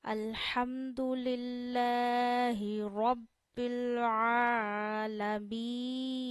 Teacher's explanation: तीन पांच या सात अलिफ जितना खींचते यही वजह है कि हम मीन को ज्यादा खींच रहे हैं लेकिन नून को ज्यादा देर नाक में नहीं ठहराना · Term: हरूफ मद्दा